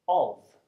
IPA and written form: ɒv (of)